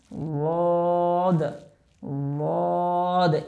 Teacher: বদ উচ্চারণ করার সময় আমাদের জিহ্বার গোড়ার কিনারাটা উপরের মাড়ির দাঁতের গোড়ার সাথে লাগবে।